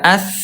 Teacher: huruf tsa ya dia lemah mengalir. Mengalir ada juga udara